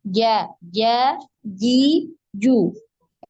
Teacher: Jadi ketika pengucapan huruf jim ini tidak ada aliran nafas yang mengalir ya di mulut. Jadi bisa coba dibuktikan ya dengan meletakkan tangan di depan mulut ya.